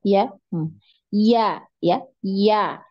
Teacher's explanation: Tengah lidahnya yang di naikkan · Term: huruf ya